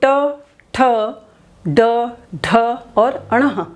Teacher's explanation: हमारी जो जिह्वा का नोक है उसका जो पिछला हिस्सा है वो क्या करता है? मूर्धा से स्पर्श करता है। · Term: मूर्धन्य